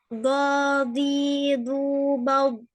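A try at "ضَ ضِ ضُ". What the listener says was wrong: Ya, nah ini kurang tebal. Mesti do di sisi. Jangan do di, itu belum tebal.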